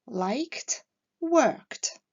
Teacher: Like et work se terminant par le même son, qui est un son sourd, la prononciation de la terminaison ed sera donc t